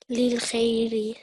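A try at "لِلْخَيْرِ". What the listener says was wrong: Well done.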